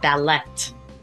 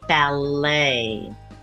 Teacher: it is not ballet the t is silent ballet be sure to practice saying